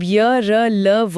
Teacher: जब य, र, ल, व बोला जाता है तो जीभ मुंह के अलग अलग हिस्सों को छूने की कोशिश तो करती है, लेकिन वो पूरी तरह से रास्ता बंद नहीं कर पाती। हवा निकल ही जाती। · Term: अंतस्थ व्यंजन